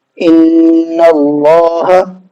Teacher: نون پر تشدید ہے تو ہم نے غنہ بھی کیا ہے